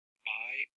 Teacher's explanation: To a native speaker of English, this part sounds like buy, because the P is unaspirated.